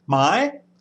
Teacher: with a higher sign you just need to go up in the register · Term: higher tone